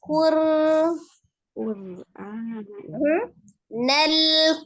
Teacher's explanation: kembali rnya ujung lidah dan punggung lidahnya ya ke gusi atas